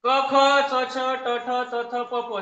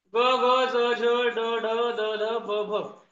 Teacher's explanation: क ख च छ ट ठ त थ प हे कठोर व्यंजने आहेत ग ज ड ड द ब हे मृदू व्यंजने आहेत